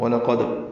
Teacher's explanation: وَلَقَدْ میں واو ہونٹوں کی نا تمام گلائی سے ادا کریں گے، لام باریک قاف پر دال ساکن پہ قلقلہ ہے